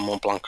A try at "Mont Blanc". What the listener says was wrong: And you don't pronounce the C. In French, you say Mont Blanc. Because if you put the word to feminine, it's blanche. And you need to do the sh sound, so you need to have the C. Yeah, the C is quiet.